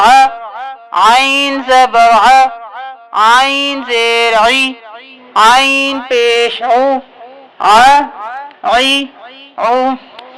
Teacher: عین گلے کے بالکل درمیان سے ادا ہوگا